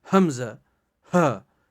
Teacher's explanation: حمزہ ہا حلق کے آخری حصے سے ادا ہوتے ہیں. یعنی حلق جو ہے، جس کو ہم حلق کہتے ہیں، جہاں سے ہم پانی غذا نیچے اتارتے ہیں، اس کو حلق کہتے ہیں.